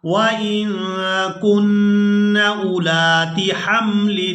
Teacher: یہاں ہم نے حمزہ کو نہیں کھینچنا، حمزہ کو بغیر کھینچے ادا کریں گے۔ اس کے بعد لام کو الف مدہ کی وجہ سے کھینچ کر ادا کریں گے۔